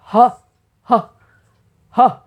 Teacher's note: विसर्ग को भी ह ह ह यानी कि आधा ह उच्चारण करते हैं